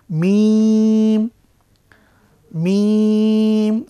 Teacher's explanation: মিম এবং বা এই যে দুটো হরফ ঠোঁট থেকে উচ্চারিত হয় · তো এই হরফ দুটি আগেই বলেছি যে দুই ঠোঁটের শুকনো জায়গা থেকে বা মাঝখান থেকে উচ্চারিত হয় মিম